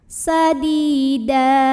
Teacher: karena ada ya sukun yang didahului kasrah, maka dalnya dipanjangkan 2 harokat. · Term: mad tabi'i